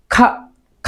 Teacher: এটা যখন বলবো তখন সজোরে বাতাস বের করে বলতে হবে